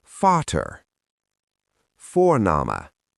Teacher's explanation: In German, when a word begins with V, it usually sounds like the English F. So V in German is very different from V in English.